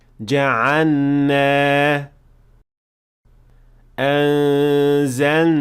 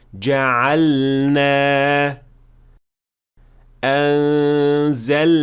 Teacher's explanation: And this happens because the lam and noon are pronounced from two spots that are very close to each other. But you should definitely pronounce the lam clearly and with idhar before moving on to the noon.